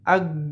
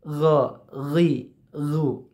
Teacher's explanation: Jika G itu dia tanpa getaran, ya, tidak terasa getaran. Tapi ghin itu ada getaran sedikit. · ketika disukun atau dimatikan, G itu tidak akan bisa lanjut. Tapi kalau ghin dimatikan, itu akan terus bisa. Contoh, kita G mati, ag, langsung mati, udah nggak bisa diteruskan huruf G-nya. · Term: huruf ghin